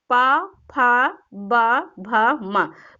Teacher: जो आपके ओंठ है वो आपस में क्या बोलते समय आपस में सट रहे हैं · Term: होठ से